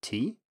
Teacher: we can ask a question by using a rising tone. So we can say tea, if you want to ask someone if they want tea.